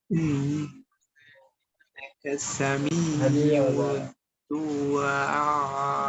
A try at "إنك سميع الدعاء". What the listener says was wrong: আইন আরো সুন্দর করে ইন্নাকা সামিউদ দুআ হঠাৎ করে থেমে যাবেন আর টান হবে চার আলিফ ইন্নাকা সামিউদ দুআ আইন উচ্চারণ কোথায় আইন সুন্দর হচ্ছে না সামিউদ দুআ